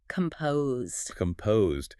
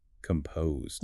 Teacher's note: the weight of the word falls heavily on the second syllable